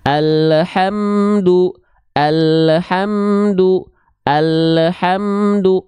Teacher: Taunya dia mantul lam sukun itu di ujung pelafalan ada bunyi vokal EU. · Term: suara yang memantul